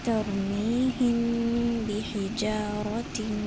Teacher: میم جیسے ہی ختم ہوگا ہم اپنے با کو اسٹارٹ کر لیں گے، جیسے ہی ہم نے میم کو چھپایا اور با کو پڑھنا شروع کر دیا۔ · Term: اخفاء شفوی